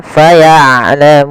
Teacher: ain jangan terlalu dialirkan suaranya tapi tidak juga ditahan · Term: sifat bainiah